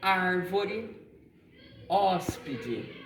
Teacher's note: a gente percebe aqui ela tem um som mais aberto a gente tem uma abertura maior da boca para falar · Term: som aberto